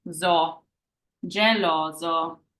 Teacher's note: we have our S sandwiched by two vowels, which makes it that Z sound like zipper. So our last sound is zo, geloso.